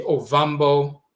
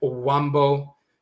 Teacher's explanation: the V and W interchange, the V sound and the W sound